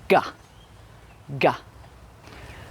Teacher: we block the air with the back of our tongue at the back of our mouths. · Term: the sound guh